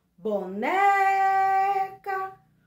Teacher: a sílaba mais forte a sílaba tônica da palavra boneca é o né